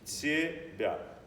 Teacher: The T is palatalized, followed by palatalized B that is also palatalized.